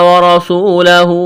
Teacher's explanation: را کو موٹا کرنا ہے، واو مدہ ہے، الف کے برابر کھینچنا ہے